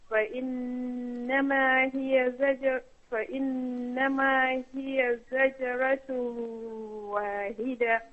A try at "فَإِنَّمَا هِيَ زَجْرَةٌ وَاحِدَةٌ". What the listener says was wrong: Remember, you just said فإنما هي, so there is a letter ha. And then when you came to the last word, you said واحدة. So there is another ha? No, it is rather a letter ha.